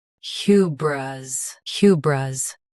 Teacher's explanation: Both US and UK have the same pronunciation of this word. Stress. Hu. Keep bris soft and quick.